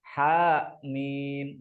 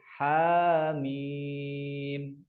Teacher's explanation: dan pengucapannya jangan sampai ada hamzahnya ya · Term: mad tabi'i harfi